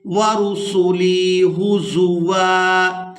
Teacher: وقف کی صورت میں واو پر ایک زبر ادا کریں گے اور اس واو کو ایک الف مقدار کھینچ کر ادا کریں گے